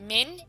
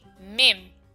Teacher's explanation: we are going to change the Noon Sakin sound into a Mim sound.